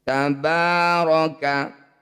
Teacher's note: huruf ba yang berharakat fathah panjang atau fathah berdiri ba ini disebut bacaan Mad Thobi'i panjangkan dua harakat atau satu ayunan